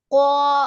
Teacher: 4 নম্বর মাখরাজ জিহ্বার গোড়া তার বরাবর উপরে তালুর সাথে লাগিয়া